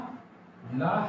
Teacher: ला का जब हम उच्चारण करते हैं तो जीभ हमारी दांत में न जाकर के कहाँ जाती है, मसूड़े में जाती है, और मसूड़े में जाने के कारण इसे क्या कहा जाता है, दंत मूल कहा जाता है।